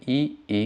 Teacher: झ ठीक है इनका उच्चारण होता है आपका तालू से और इसमें ई ई का भी उच्चारण स्थान तालू से होता है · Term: तालव्य